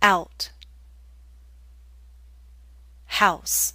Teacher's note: It may help you to know that we're using a slight W sound, w, to make this glide possible.